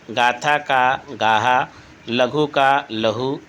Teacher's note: महाप्राण व्यंजन प्रायः ह के रूप में उच्चरित होने लगे